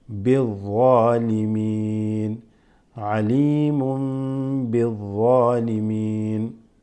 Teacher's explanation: You're going to drop the alif lam and go straight into the dhad because it is a shamsiya, huruf shamsiya.